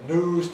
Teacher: Like Londoners, Americans drop yod after N.